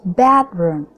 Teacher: bedroom penekanan katanya ada pada kata bed